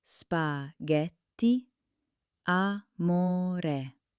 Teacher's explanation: The stress falls on the penultimate syllable. That's the second to last one.